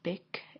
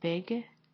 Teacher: where the speaker said bic instead of big, and that would be an example of devoicing